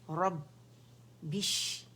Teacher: اس میں شدہ آواز رک جائے گی، سختی کے ساتھ، قوت کے ساتھ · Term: مشدد